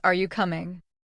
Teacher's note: rising tone often used for questions